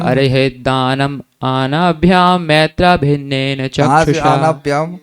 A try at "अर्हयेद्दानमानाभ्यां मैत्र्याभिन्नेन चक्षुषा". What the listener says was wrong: कहाँ से आनाभ्याम, मानते नहीं मानभ्याम मानते नहीं मानभ्याम, आनाभ्याम कर दिया आपने। अर्हयेद्दानमानाभ्याम मैत्रेयाभिन्नेन चक्षुषा।